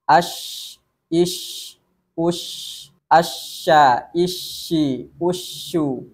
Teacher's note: adalah mengalirnya suara atau yang disebut dengan rakhawah mengalir suara artinya ada bunyi yang tetap mengalir ketika huruf syin dibaca dalam keadaan sukun maupun bertasdid